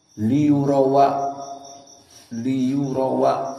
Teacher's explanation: Lalu harakat hamzah a dipindahkan kepada yang sebelumnya yakni wau. Maka wau yang tadinya sukun liurau jadi fathah. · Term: naql